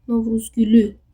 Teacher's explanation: Görürsüz burda sonuncuya düşür. Sonuncu heca qüvvətli tələffüz olunur.